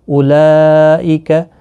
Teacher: یہاں پر مد متصل ہے، 4 الف کی مقدار کے برابر کھینچ کر پڑھیں گے، را پر پڑھا جائے گا زبر کی وجہ سے۔